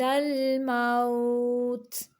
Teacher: تا کو ساکن کرتے ہوئے قلقلہ نہیں کریں گے بلکہ تھوڑی سا اس کی آواز کو جاری رکھیں گے۔ موت نہیں کریں گے، موت۔